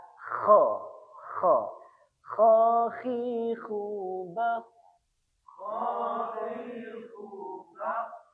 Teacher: huruf kho itu seperti kita ketika mendengkur ya. Kho. Nah, seperti ketika ngorok, kho harus serak.